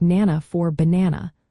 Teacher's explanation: Weak syllable deletion where unstressed syllables are left out